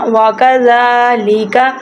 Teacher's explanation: زال کے اوپر کھڑی زبر ہے، اس کو لمبا کریں گے